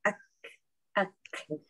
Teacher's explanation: yang kaf tu dia bertembung tempat yang tak berapa keras, so dia ada nafas dia keluar